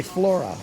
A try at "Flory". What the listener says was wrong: No, Flory with a Y. No A. No A. It's R-Y. Flory.